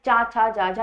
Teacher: चाछा जाजा इसमें ताल मुख्यतः प्रयोग होता है। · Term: तालव्य